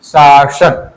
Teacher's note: शासन, तालव्य सा पहले फिर दंती सा